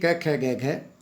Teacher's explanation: इसलिए इनको कोमल तालव्य कहा जाता है। तो ये क, ख, ग, घ ये कोमल तालव्य ध्वनियाँ हैं।